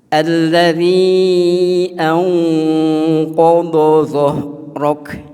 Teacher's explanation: Sehingga kalau kita mengucapkan pada misalnya di sini ya, Alam Nashrah tadi ya, min qob itu kurang pas, sehingga qob itu ya, langsung tebal ya, lidahnya terangkat ya. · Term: sifat isti'la